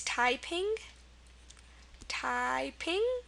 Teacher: the stress is on the second uh syllable